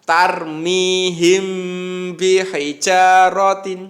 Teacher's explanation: Ikhfa syafawi itu cara membacanya ini adalah mim sukunnya dibaca samar-samar di bibir